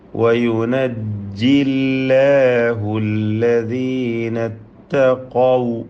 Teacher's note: ഖാഫിന് മാത്രം തഫ്ഖീം കൊടുക്കുക, തടിപ്പിച്ച് പറയും · എല്ലാ അക്ഷരങ്ങൾക്കും തർക്കീഖാണ്, ഇസ്തിഫാലിൻ്റെ അക്ഷരങ്ങളാണ്